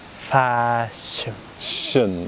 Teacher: the second syllable, the mouth remains relaxed because it's unstressed.